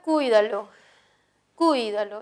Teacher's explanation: lleva tilde por ser esdrújula. La mayor fuerza de voz está en cuy.